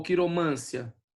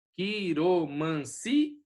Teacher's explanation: Então ali é o hiato, certo? É o si que é a mais forte.